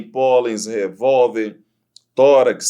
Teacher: a sílaba tônica está na penúltima sílaba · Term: paroxítona